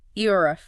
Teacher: The first part eo would be kind of like the e in bed mixed with a short o sound. The r is rolled slightly.